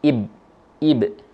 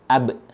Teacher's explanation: Huruf ba ketika kita ucapkan dalam kondisi sukun, dia terletak di bibir yang dirapatkan, kemudian ada suara pantulan b.